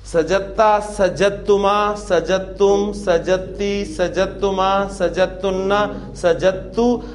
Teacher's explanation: دال اور تا چونکہ ہم مخرج حروف ہیں لہذا ان دونوں کو مرج کر دیا گیا, اور ساؤنڈ آپ کو صرف تا کی سنائی دے گی. اور ہمیں ہماری سہولت کے لیے آپ کو تا پر شد لکھی ملے گی, تاکہ آپ نے اس کو جیم کی زبر کو ڈائریکٹ تا کے ساتھ ملانا ہے, دال پروناؤنس نہیں کرنی.